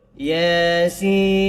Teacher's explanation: Ya ni dua harakat. Sin ni dibaca 6 harakat. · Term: mad lazim harfi mushbah mukhaffaf